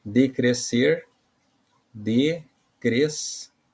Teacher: Lembrando ali que o S separou do C, né? Então, e a sílaba mais forte é a última sílaba ali, palavra oxítona